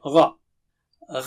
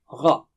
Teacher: غا جو ہے نا وہ اونچا لفظ ہے، موٹا اس کے اندر شامل ہے